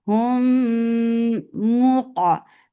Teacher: you're keeping the sound in your nose for a longer time because there is akmal gunna